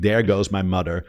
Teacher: There's no th. It's just T or D. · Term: Dutch accent